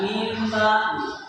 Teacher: Tapi karena ini adalah iqlab, maka dibacanya min ba'di. Makhraj nun mati atau tanwinnya itu diganti menjadi bunyi mim, bukan bunyi nun.